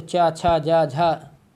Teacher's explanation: जीभ जो है तालु को छुएगी